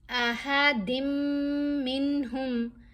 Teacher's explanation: اب میم بھی حروف یرملون میں ہے، لیکن جب ہم نے دال کو میم سے ملایا تو ہم نے غنہ کیا، یعنی ایک حرکت کے برابر ہم ٹھہرے، آواز ناک میں گئی